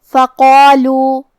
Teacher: یہاں مد جائز منفصل ہے، اور مد جائز منفصل کا معنی ہے کہ حرف المد پہلے کلمہ کے آخری میں ہو اور اس کی وجہ جو کہ حمزہ ہے وہ دوسرے کلمہ کے شروعات میں آئے. اس مد میں ہم اپنی آواز 2 سے 4 مد کے برابر لمبی کریں گے